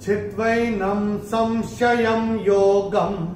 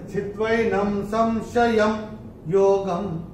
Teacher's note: और य के ऊपर ये जो अनुस्वार आ रहा है इसके बाद का अक्षर है य। तो अनुस्वार के बाद य आएगा तो अनुस्वार का उच्चारण होगा म।